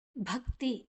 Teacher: ಭಕ್ತಿ, ಭ ಮಹಾಪ್ರಾಣ, ಕ ಮತ್ತೆ ತಿ